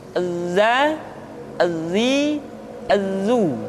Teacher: ketika kita mengucapkan huruf dza suara kita mengalir akan tetapi nafas tidak boleh mengalir contoh yang salah seperti ini zat gizi Azu Hai seharusnya nafasnya